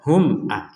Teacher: mim sukun bertemu Hamzah dibaca jelas